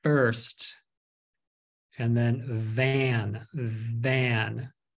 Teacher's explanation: it's labial Dental so you're using your lips and your teeth